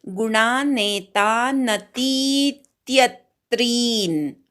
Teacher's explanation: तिय मधल्या यवर आघात घेऊन त्री दीर्घ म्हणायचा.